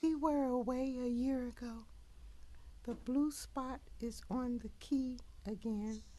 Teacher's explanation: So I would describe her voice as high-pitched, very breathy